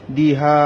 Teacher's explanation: দিহা দা টান নাই, হা একালে টানতে হবে, জবরের বাম পাশে খালি আলিফ।